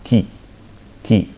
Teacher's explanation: You can able to see the time domain signal, just now we have seen for k, you can see there is a burst of noise, and preceding that there will be a silence, right, we have a silence followed by a burst of a noise, and then afterwards here this also contains the vowel e also, ki, right. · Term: unvoiced stop consonant